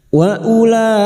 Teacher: bertemunya mad dengan hamzah dalam satu kalimat mad wajib muttasil lima harakat kita panjangkan